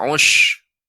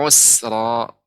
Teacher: Lebih ditipiskan lagi Bapak. Ya, sin-nya, bukan shin. Tidak ush. Ya.